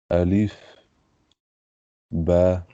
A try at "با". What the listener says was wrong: تھوڑا سا لانگ کریں گے اس کو کیونکہ اس کے ساتھ کیا ہے الف بھی ہے ایک نا.